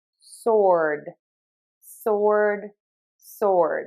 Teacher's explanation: it's like you're saying a T, but your voice box is on and vibrating and moving. That's going to make the D sound. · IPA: /sɔrd/